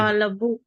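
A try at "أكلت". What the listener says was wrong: ఆ కాతో కా తర్వాత ఉన్న అక్షరం ఏమిటి? కాకును తర్వాత అక్షరానికి రెండింటిని జాయిన్ చేయాలి. కా కా లాం. కల్. ఆ కల్. తు, అకల్తు.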